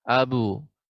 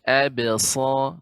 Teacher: ba-nya tetap tipis, tidak menjadi tebal